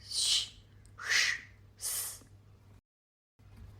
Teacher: The voice box is not engaged in producing these sounds. They are made purely by air hissing through the mouth. So they are aghosha, unsounded.